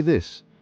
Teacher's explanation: feel the vibration that's your vocal cords working this vibration is essential for producing the voice th sound · For the voiced TH, like in mother, you vibrate your vocal cords. This gives the sound its distinct quality. · Notice how your vocal cords engage. Feel the vibration.